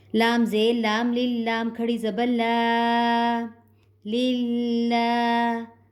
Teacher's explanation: یہ کھڑی زبر جو ہے اس کی ادائیگی میں کھڑی زبر کو ہم 1 سے 2 سیکنڈ کے لیے کھینچ کے پڑھتے ہیں